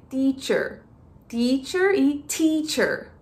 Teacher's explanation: a gente precisa soltar um pouco de ar ao pronunciar o te